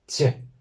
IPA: t͡ɕ